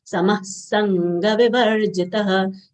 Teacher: Visarga sound comes out as half sa, as it is followed by sa of sanga vivarjitah. Sanga, sa followed by half nasal consonant of guttural varga and ga full letter.